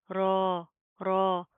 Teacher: रॉ को मोटा पढ़ेंगे, प्रॉपर मुंह को पूर करके इसकी अदायगी होगी।